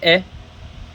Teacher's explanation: ए कहाँ से आ रहा है, कंठ तालव्य से आ रहा है